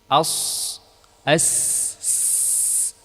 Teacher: Ini juga sudah kita jelaskan tadi bahwa sofir itu dia adalah tajam. Tajamnya suara disebabkan suara tadi mengalir dari aliran yang sempit, yaitu antara dua gigi seri.